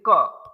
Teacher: लेकिन जब आप व्यंजन बोलते हैं तो आपको आपकी आपके गले में, जैसे क, तो गले में रुक रही है आवाज, वहां से टकरा रही है